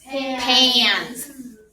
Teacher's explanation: Because A and N go together and we get a nasal, whiny sound.